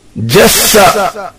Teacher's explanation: With sin, a whistling sound is made.